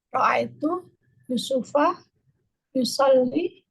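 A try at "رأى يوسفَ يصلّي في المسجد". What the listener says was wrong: Yusufa ahsanti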